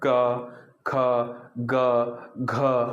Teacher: अवरोध पैदा हो गया कंठ में, तो इन्हें कंठ व्यंजन भी कहा जाता है